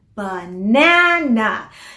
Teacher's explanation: So sa mga babies, because babies are very efficient, gusto nila nagagawa in the simplest way possible, minsan kinakalimutan na muna nila yung unstressed or the weaker syllable. So sa salitang banana, the stressed syllable is the second one. Banana. So, minsan there's a tendency, kakalimutan na lang nila muna yung first syllable, di naman stressed eh.